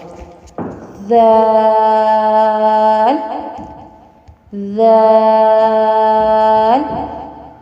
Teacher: ذال، ذال، ثا اور ذال دونوں میں سیٹی کی آواز نہیں آنی چاہیے، یہ نرمی والے حروف۔ ثا اور ذال یہ نرمی والے حروف ہیں، ان میں سیٹی کی آواز بالکل نہیں آئے گی، اور زبان کی نوک جب ثنایا علیہ کے کنارے سے لگے گی تو ذال اور ثا یہ دونوں حروف ادا ہوتے ہیں۔